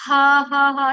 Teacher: आप जो हा निकाल रहे हो वह दो चश्मे वाला हा है। यह जो हमारे बिल्कुल नीचे वाले हिस्से से निकाल रहे हैं। हम अपने मुंह को खोल रहे हैं और सिर्फ हा ठीक है।